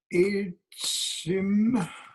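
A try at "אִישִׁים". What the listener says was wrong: Ishim. It's a shin over there.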